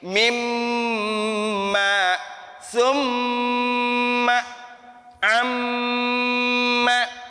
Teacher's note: bibir atas sama bibir bawah kita itu digetarkan oleh huruf mim